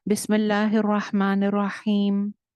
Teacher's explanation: मीम के ऊपर वक्फ करने की सूरत में भी मीम की आवाज नहीं चलेगी।